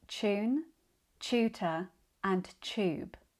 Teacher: in modern RP and many southern British accents often use the ch pronunciation